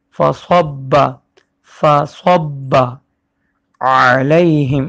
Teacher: آج کے سبق کا پہلا لفظ فصبا، فا زبر فا پتلا پڑھا جائے گا اور پھر صاد کو با سے ملانا ہے، با پہ تشدید ہے اور صاد کو موٹا پڑھتے ہیں